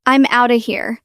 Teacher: Outa is the reduction of out of.